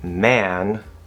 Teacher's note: if a is before m or n it's much more likely that there will be this higher raising or this tenseness